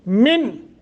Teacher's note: नून साकिन के बाद हरूफ हल्की में से हमज़ा है, इजहार करके पढ़ेंगे।